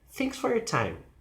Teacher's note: the falling intonation gives an idea that something finished sounds finished · the emphasis is thanks and then goes down until time